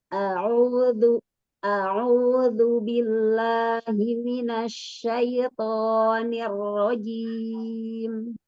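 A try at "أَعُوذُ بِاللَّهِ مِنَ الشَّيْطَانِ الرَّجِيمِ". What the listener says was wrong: Tinggal di kata minasyaito di huruf to-nya kurang kuat dan kurang dibuka Umi. Minasyaito to to. Lagi itbakan lagi. Minasyaitonir rajim. Kan, tapi jangan sampai kelebihan harokatnya.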